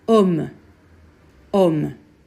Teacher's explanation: Slovo H je u francuskom nemo slovo. Zaboravite naše hrapko H iz grla, u francuskom se ono nikada ne čuje.